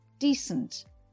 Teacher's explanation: Decent is usually stressed on the first syllable and said like this: decent.